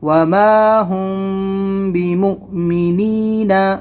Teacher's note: حمزہ کے اوپر جزم ہے تو یہاں پر جھٹکا ہوگا